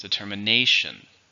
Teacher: it has five syllables with the stress in the fourth